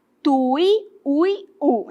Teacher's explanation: Nós temos aqui o U forte, está na posição oxítona